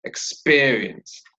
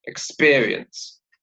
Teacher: 3 syllables, and the stress is on the second syllable